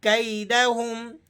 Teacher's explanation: یا لین ہے تو آپ نے اس کو نرمی سے پڑھنا ہے، کھینچنا نہیں ہے۔ کیدہم، بعض ساتھی اس طرح سے مجھول پڑھ دیتے ہیں، کیدہم، اس طرح سے صحیح نہیں ہے۔